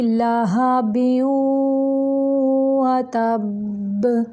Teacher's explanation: तनवीन की आवाज़ को गुन्ना के साथ वाव के साथ मिलाते हुए निकालना है, यानी नाक की जड़ से।